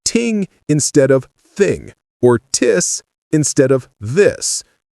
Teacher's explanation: Your tongue pops away from your teeth too quickly because that's what happens with T sounds in Japanese. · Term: T replacement